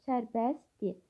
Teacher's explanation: Sərbəst sözün tələffüzü bu cür olur. Sərbəst yəni t samiti tələffüzdə düşür. · Yəni T samiti tələffüzdə düşür. Dil şəkilçisindəki R samiti də tələffüzdə düşür. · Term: səs düşümü